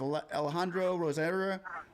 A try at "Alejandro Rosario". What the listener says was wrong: Alejandro, roll that R.